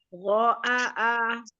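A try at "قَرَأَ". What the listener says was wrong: Untuk pertamanya jangan diangkat ya Mi. Begini ya, kadang-kadang kita sudah paham ini bacaannya pendek, tapi teknik baca kita mempengaruhi huruf pertama panjang, gitu ya. Karena kita mengangkat khotoba, seperti khotoba, mengangkat ya.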